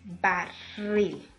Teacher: No está tildado, o sea, no tiene una representación gráfica, pero usted sabe que la mayor fuerza de voz recae en la última sílaba de esa palabra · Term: acento prosódico